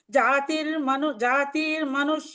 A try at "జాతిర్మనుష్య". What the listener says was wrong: అలాగే మీరు ఎందుకో జాతి మనుష్యాన్ని తకార ఈకారం దీర్ఘంగా అలా వినిపిస్తోంది నాకు. హ్రస్వంగా అలా అనకుండా జాతిర్మనుష్య.